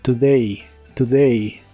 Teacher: la letra o se pronuncia como una u pero muy corta y suave